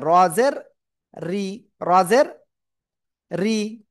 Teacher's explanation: এই র অক্ষরের নিচে যদি জের আসে তাহলে কি হবে, রটা চিকুন হবে, রজের রি, রজের রি।